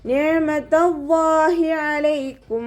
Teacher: അയനിൻ്റെ സൗണ്ടിനെ തൊണ്ടയുടെ മധ്യഭാഗത്ത് തന്നെ കൊണ്ടുവരിക. ഹംസയുടെ സൗണ്ടായി പോവാൻ ചാൻസ് ഉണ്ട്, ശ്രദ്ധിക്കുക കേട്ടോ.